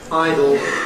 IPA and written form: ˈaɪdl̩ (idol)